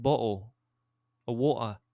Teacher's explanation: It's almost like Cockney, where you've got like the glottal stops of like bottle or water